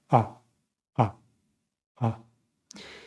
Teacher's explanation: the A has the tongue in the back, and the mouth a bit open